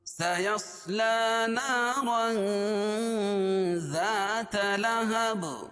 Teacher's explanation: سین کو باریک، صاد کو موٹا. کیونکہ صاد حروف مستعلیہ میں سے لا، کھڑا زبر قائم مقام الف مدہ کے، اس کو ایک الف کے برابر کھینچ کے پڑھیں گے.